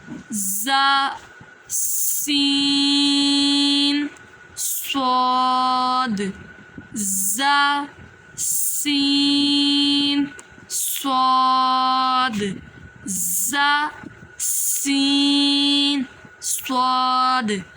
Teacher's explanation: ऐसे महसूस होता है जैसे सीटी हम दे रहे होते हैं · ان کو حروف صفیریہ کے ساتھ ساتھ سیٹی والے حروف بھی بولتے ہیں کیونکہ یہ ادا کرتے وقت ہماری ایسے محسوس ہوتا ہے جیسے سیٹی ہم دے رہے ہوتے ہیں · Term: सीटी वाले रूफ